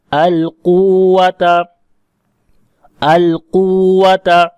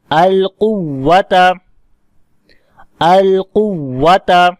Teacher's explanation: تو یہاں پر کیونکہ ادغام ہو گیا تو اب مد یہاں نہیں کریں گے، اور پھر اس واو کے اوپر شد کو واضح کرنے کے لیے ہم یہاں پر نبر کریں گے، آواز واو کی اونچی کریں گے۔ تو یہ وہی قاعدہ ہے جو ہم نے اوپر پڑھا کہ جب واو اور یا کے اوپر شد آئے تو اب آواز کریں گے القوۃ، القوۃ۔